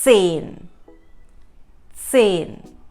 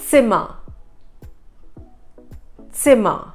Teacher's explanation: Another letter is Z, which is called Z in German, has a TS pronunciation.